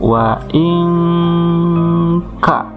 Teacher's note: Ikhfa itu samar, jadi suara nun matinya tidak dibaca an dan juga tidak dibaca lebur masuk ke huruf berikutnya. Nah, oleh karena itu untuk memudahkan pembacaan nun mati ini bisa diganti dengan huruf ang. · untuk memudahkan pembacaan nun mati ini bisa diganti dengan huruf ang. Jadi pembacaannya wa ingka.